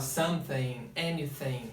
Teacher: O som do TH, que é um som feito com a língua entre os dentes, né? Com a ponta da língua entre os dentes. E ele soa muito como F pra gente, às vezes como D, às vezes como T.